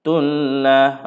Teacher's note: baqaratullah, mana ada dengun? Tak ada dengun langsung. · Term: idgham bila gunnah